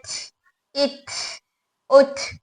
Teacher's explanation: लेकिन ता और काफ दो ऐसे हुरूफ है इनके अंदर सिफत शिद्दा के साथ सिफत हम्स आ रही है, इसी वजह से इनके अंदर हवा ज्यादा निकल कर आ रही है, इसलिए एच इट उठ इस तरह से अप्लाई हो रहा है, आवाज आ रही है, एच इट उठ।